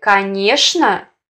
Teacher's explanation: В слове «конечно» нормативным является произношение «шн», а не «чн».